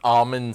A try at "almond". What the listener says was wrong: You're forgetting the L in almond. Yeah, but you were saying almond. Just like you say water.